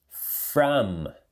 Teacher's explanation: Termina fechando a boca.